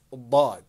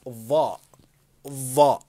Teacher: When you say ضاد, the tongue stays inside your mouth. ضاء, your tongue has to be out. Notice of. Notice my tongue is out of my mouth.